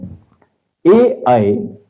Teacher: ए अग्र भाग से बोला जाता है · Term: अग्र स्वर